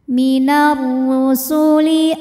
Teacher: huruf ra dibunyikan secara tafkhim sebab ra berbaris dhammah, maka ra dibunyikan dengan tebal.